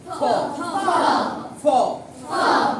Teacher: উপরের দাঁত দিয়ে নিচের ঠোঁটটাকে কামড়ে ধরো, ধরে বাতাস দাও